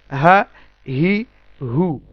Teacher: একদম আমাদের vocal cord যেখান থেকে আমাদের সাউন্ড প্রডিউস হচ্ছে সেই জায়গা থেকে উচ্চারিত হবে